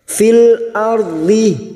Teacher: ra sukun yang didahului fathah kita baca tafkim